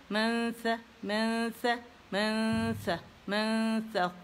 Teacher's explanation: یہاں پہ لانگ غنہ ہوگا